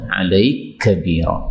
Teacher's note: Ini kaf ketemu kaf ini boleh idgham ya